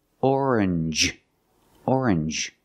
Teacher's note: you make the n Sound not the nasal sound just n and the J like juice J together